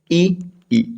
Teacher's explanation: ई जो है ना इसका उच्चारण स्थान है तालव्य या तालु। आप इसको तालु भी बोल सकते हैं या फिर तालव्य भी बोल सकते हैं।